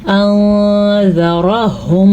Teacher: गुन्ना भी करना है और नून साकिन की आवाज़ को छुपा भी देना है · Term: इख्फा